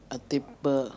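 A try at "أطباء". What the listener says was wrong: Atibba'u. Lihat yang diberi tasdid ba-nya ya ikhwan. Jadi jangan baca attiba'u, salah. Hadi qira'ah ghair sahihah. Yang benar adalah as-sahih atibba'u. Ba-nya yang musyaddada. atibba'u. Tidak, bukan atibba'un.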